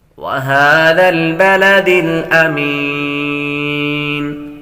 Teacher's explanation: کھڑی حرکات حروف مدہ کے قائم مقام ہے, کھینچ کر پڑھیں گے